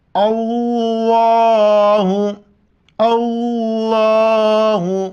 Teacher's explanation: لفظ اللہ سے پہلے حمزہ پر زبر ہیں، موٹا کر کے پڑھیں گے